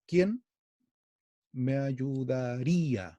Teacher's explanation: quién me ayudaría se acentúa en el 1 y el 5